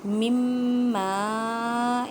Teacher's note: الف مدہ کا قاعدہ کریں، بڑی مد 6 الف کی مقدار میں کھینچ کر پڑھیں · نون ساکن کے بعد میم ہے، یہاں پہ ادغام مع غنہ کریں